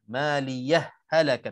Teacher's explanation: kalau kita nak sambung tanpa saktah kita boleh idghamkan maliyah halakat terus masuk.